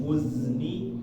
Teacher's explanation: Dilatih minal muz ini turun semua. Muz ni naik langsung ujung lidahnya ke bagian gusi atas langsung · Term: huruf za